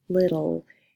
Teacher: the word little the e is silent so it's actually that a schwa sound coming in before the L that creates that syllable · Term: syllabic L